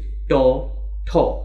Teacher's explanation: দেখা যাবে জিব্বা উল্টে গেছে, উপরে খাঁচকাটা অংশটা আঘাত করছে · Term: মূর্ধন্য বর্ণ